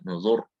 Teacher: Ro sukun sebelumnya dhamma, sebelumnya dhamma, nah maka juga tebal.